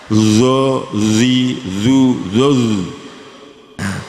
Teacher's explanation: cuma zo ini agak dimoncongkan